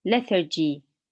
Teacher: The stress is on the first part, lethargy.